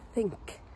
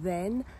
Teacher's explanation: this is a voiceless fricative means you don't engage your vocal cords if you engage your vocal cords it's the as in then